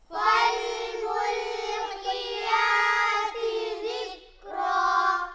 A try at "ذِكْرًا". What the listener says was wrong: کاف کو ہلانا نہیں ہے، ذکرا۔